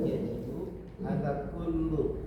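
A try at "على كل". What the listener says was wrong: Ala kulli, ingat ada ala ya Pak. Kalau ada alaf huruf apa itu? Huruf jar, maka setelahnya harus dikasrah. Ingat ya, kalau ada ala harus dikasrah. Ala kulli.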